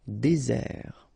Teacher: really this Z sound just because you get one S between the two vowels